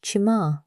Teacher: Imagine a soft chi with your tongue raised toward the roof of your mouth, softer than the English chi in cheese. Make it gentle, not the hard chi of church, more like you're whispering it. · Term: soft chi sound